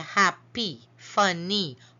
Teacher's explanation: the words with more than one syllable usually at the end when it ends in the Y you hear that long e sound